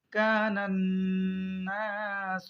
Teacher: اذش، شن میم زبر شم، اذا الشم، سن پیش سو، اذا الشمس، کاف الف زبر کا، نون نون زبر نن، کانن، نون الف زبر نا، سن پیش سو، کان الناس، نن میں گننا کریں گے کیونکہ آپ نے قاعدہ پڑھا ہے کہ نون پر تشدید ہو تو نون پر گننا کریں گے، یعنی تھوڑی دیر ناک میں آواز کو روک کے رکھیں گے